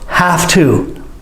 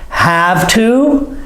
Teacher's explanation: I make the F sound instead of the V sound because that's how we say it normally.